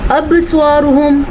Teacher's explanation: ابصارہم پھر قلقلہ آ گیا ہمارے پاس. با کے اوپر ساکن ہے تو اس جھٹکا آئے گا اور قلقلہ ادا ہو جائے گا